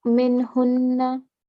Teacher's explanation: So it should be short and clear without nasal sound.